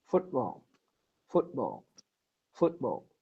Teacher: the difference between button and football is that we don't have the glottal stop